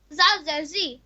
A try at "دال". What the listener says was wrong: دال. زال نہیں میرے بیٹا دال ہے. دال زیر دی.